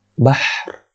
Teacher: Ada angin itu, ha tu. Ada sifat hams